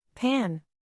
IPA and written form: pæn (Pan)